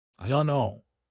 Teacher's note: You basically drop the d and the t completely. IO.